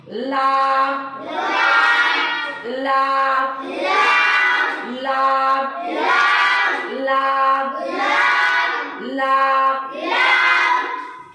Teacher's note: जबान की नोक को हमको ऊपर के दांतों के मसूड़ों को लगाना है। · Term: लाम